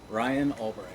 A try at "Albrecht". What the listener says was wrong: well, it's ALBRECHT, not the RI.